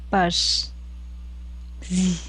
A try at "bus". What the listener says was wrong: so it is a bus. This is not a Z, it is a bus. there is a rule.